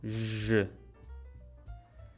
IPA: ʒ